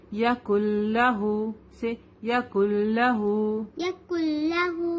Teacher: لام پر کیا ہے؟ تشدید ہے، تو اس کو ہم 2 ٹائمز پڑھیں گے. ایک بار اس کو کاف سے ملائیں گے، ایک بار لام زبر لا.